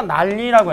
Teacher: 우리가 난리라고 했을 때 니은과 리을이 만났을 때 말이야. 이 뒤에 있는 리을의 영향을 받아서 앞에 있는 니은이 리을로 바뀌게 되는 거잖아. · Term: 역행동화